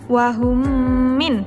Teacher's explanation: memasukkan huruf mim sukun ke dalam huruf mim, yaitu apabila ada huruf mim sukun bertemu dengan huruf mim hidup. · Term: idgham mimi